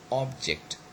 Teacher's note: the stress falls on the first syllable